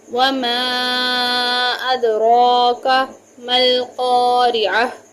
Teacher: اب یہاں پر میں نے وما کو بہت لمبا کیا کیونکہ اس کے اوپر ایک چھوٹی مد ہے، پھر دال پہ قلقلہ ہوگا، را کے اوپر کھڑی زبر ہے، اس کو پر بھی پڑھیں گے